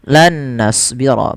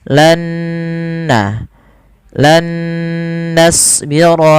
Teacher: Di sini diwarnai dengan nun yang kedua warna hijau yang artinya idgham itu memasukkan nun yang pertama kepada nun yang kedua disertai dengan gunah. Maka lan nasbir tidak dibaca dengan lan nasbio. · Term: idgham bighunah